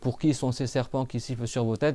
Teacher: Ça siffle quand tu serres tes dents. Et il faut que la langue elle aille derrière les dents du bas. C'est pas que la langue elle bouche.